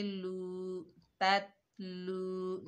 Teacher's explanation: ता, लाम के ऊपर पेश है, आगे वाव साकिन है, लाम को वाव साकिना से मिलाएंगे, ये वाव मद्दा है, एक अलिफ की मिकदार खींच कर पढ़ेंगे